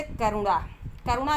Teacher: तो करुणा बोलने में आपको जो है रा पे छोटा ऊ की मात्रा में कम से कम समय लग रहा है।